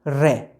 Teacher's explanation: रे जो है परकंपित है, यानी जीभ ज़्यादा कंपन करती है रे बोलते वक्त।